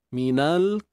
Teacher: Lam yang mati ni kita jangan tebalkan dia. Lam ni dia nipis je.